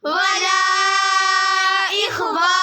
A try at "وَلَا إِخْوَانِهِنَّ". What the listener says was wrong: आगे मद नहीं है, वला के ऊपर मद है। वला इख्वानिहिन्ना